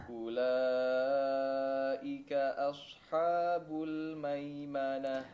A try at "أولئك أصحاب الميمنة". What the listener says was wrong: Taib, di sini juga asha ya. Asha. Fathahnya diperjelas ya. Itmamul harakatnya diperhatikan, jangan os ya. Huruf shad yang tebal seringkali mempengaruhi huruf sebelumnya ataupun setelahnya.